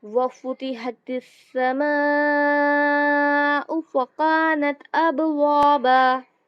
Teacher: با پر قلقلہ ہوگا